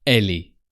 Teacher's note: So when you have a verb that starts with a vowel, it's often really bound with the pronoun. So she is actually sounds elle est, as if it was only one word